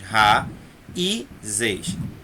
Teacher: Observa que o i ficou sozinho, só que ele é forte, ele é sílaba tônica, por isso que ele é acentuado.